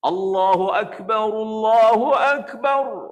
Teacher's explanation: Jangan panjang A. A pun jangan panjang. Bar pun jangan panjang.